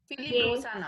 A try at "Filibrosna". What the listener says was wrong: Just Filibrosna. It is not Brosana. It is Brosna.